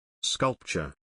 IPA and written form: ˈskʌlp.tʃər (Sculpture)